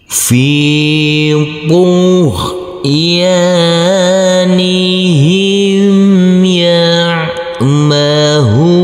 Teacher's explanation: huruf ain yang bersukun ini harus kita alirkan. Fi tughyanihim ya'mahu, huruf H kita baca panjang dengan panjang 2 harokat karena huruf H ini, huruf H yang berdhamma U bertemu dengan huruf waw sukun.